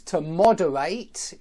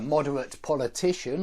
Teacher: To moderate is a verb, but moderate, such as a moderate politician or something like that, that's an adjective and that ends ut, not ate.